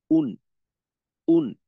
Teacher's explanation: যখন আমি উ হামজার উচ্চারণটা করব তখন আমার ঠোঁট গোল হবে, আর যখন নুনের উচ্চারণটা করব তখন আমার ঠোঁট কিন্তু খুলে যাবে। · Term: হামজা দুই পেশ উন